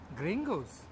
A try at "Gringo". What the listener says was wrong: Oh, Gringo. It's not Gringos. Gringo. You say Gringos. No. No S. Just Gringo. Gringo.